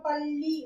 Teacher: பண்ணுவோம் இந்த பள்ளி சொல்லும்போது இந்த நாவுடைய அந்த இரு பக்கமும் நுனி கிடையாது நாவுடைய இரு பக்கமும் மேல்வாய் அன்னத்தோட நடுப்பகுதியை போய் தொடும் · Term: பெரிய லா